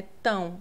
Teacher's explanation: É como se tivesse um u no final. É como se você falasse assim, ó, c tão. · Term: ditongo nasal